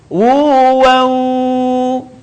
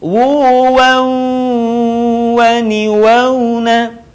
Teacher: Jadi diucapkan tidak wu, waw. Sebagian suara keluar dari rongga hidung.